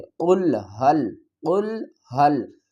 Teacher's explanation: قاف کو پر پڑھیں گے، قاف کو لام سے ملائیں گے، اور ہا کو بھی لام سے ملائیں گے۔